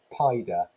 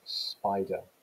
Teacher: so naturally the child is going to reduce and simplify so they're reducing a consonant cluster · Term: reduction in consonant clusters